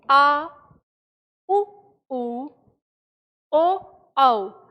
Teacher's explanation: जिन स्वरों के उच्चारण में जीभ का पिछला भाग काम करता है, उन्हें पश्य स्वर कहते हैं।